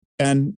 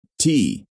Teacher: The position of the tongue when pronouncing the AND is very similar to that when pronouncing the T. Both have the front of the tongue at the roof of the mouth.